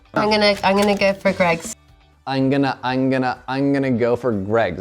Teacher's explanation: sabemos que no usó la M porque no cerró la boca para decir I'm. Ella le dijo acá I'm gonna, porque así es un poco más rápido. · ella dijo I'm gonna go for, pero ella no dijo I'm, ella se comió la M.